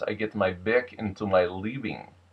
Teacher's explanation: So instead of I don't need to fight to prove I'm right, Middle American R, becomes I don't need to fight to prove I'm right. Number 3, the W and the V tend to reverse and become a softer version